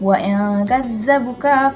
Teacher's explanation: ada nun mati atau tanwin bertemu dengan huruf kaf. Dibacanya samar dengan dengung. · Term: ikhfa hakiki